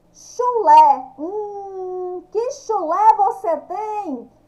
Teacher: Acento agudo no E. O som mais forte no E. Sai um som aberto.